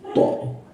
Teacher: Huruf th lidahnya berbeda dengan dengan th kalau di Indonesia to. Jadi lidahnya di gigit ya atau bertemu dengan gigi